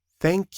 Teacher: In thank, the sound is unvoiced. You hear only air.